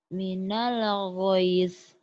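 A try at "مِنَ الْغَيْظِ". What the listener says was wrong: Minal goyul. Goyul. Bukan jangan gois. Goyul.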